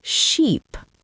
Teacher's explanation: If you don't stretch your mouth into a smile for the word sheep, you end up saying ship, and suddenly a sentence about a cute farm animal becomes a sentence about a huge boat. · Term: long e